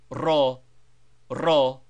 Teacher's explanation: as in English but sounded much more forcibly and always with a Trill